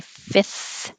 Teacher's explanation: that first f is just skipped and it sounds like fifth if you want to be totally